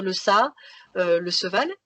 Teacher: le cas assez fréquent du phonème che qui est remplacé par se. À ce moment-là, on a des enfants qui vont dire le ça, le seval.